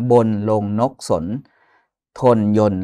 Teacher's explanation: เหล่าเนี้ยมีเสียงสระโอะทั้งสิ้นนะครับแต่ว่าไม่มีรูปให้เห็นนะครับ